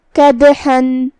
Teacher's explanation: یہاں دال کا حکم ہے قلقلہ. قلقلہ کا معنی ہے حرف ساکن کو ہلانا، تو ہم یہاں دال کو ہلاتے ہوئے یہ کلمہ کو ادا کریں گے